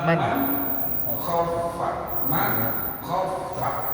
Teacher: izhar itu harus jelas enggak boleh ada dengungnya maksudnya jelas itu suara nun matinya nampak